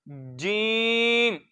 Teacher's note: जीम जुबान के दरमियान और तालू के दरमियान से।